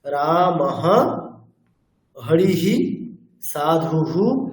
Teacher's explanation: বিসর্গের পূর্বের বর্ণটি যোগ করতে হবে হকারের সাথে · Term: বিসর্গের স্বাভাবিক উচ্চারণ